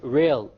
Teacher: The English R comes from the middle of the tongue.